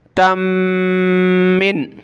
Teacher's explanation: تا کو میم کے ساتھ ملائیں گے، ناک میں آواز پیدا کریں گے